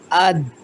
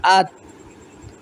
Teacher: زبان کی نوک اور اوپر کے سامنے کے 2 دانتوں کی جڑ سے ان کا مخرج نکلتا ہے۔